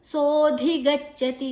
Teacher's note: ಸೋ ದೀರ್ಘಕ್ಷರ ಧಿ ಮಹಾಪ್ರಾಣ